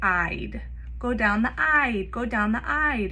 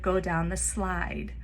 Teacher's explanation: for slide that consonant cluster in the beginning sl might be omitted altogether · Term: cluster reduction